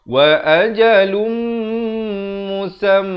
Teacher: Asalnya lam tanwin di bawah, di depan bunyi lun. Tapi bila datang mim terus masuk beserta dengung 2 harakat.